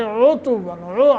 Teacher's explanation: عین کا ادنائے حلق، تو عین کا خیال کر کے عُتُوًّا ضمہ پڑھنا ہے۔